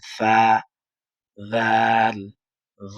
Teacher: জিহ্বার আগাটা সামনের উপরের ২ দাঁতের আগার সাথে লাগাবেন